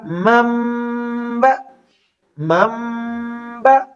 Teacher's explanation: اس نون ساکن کو بیچ میں سے سکپ کر دیتے ہیں اور اس نون کی جگہ ایک چھوٹی میم ساکن جو ہے اس کو لے آتے ہیں، پڑھنے میں بھی اور لکھنے میں بھی.